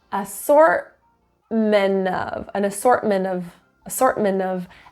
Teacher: necessarily do your glottal T and it's a combination NT often the combination for some reason of NT when those two consonants are next to each other we kind of cheat and drop the T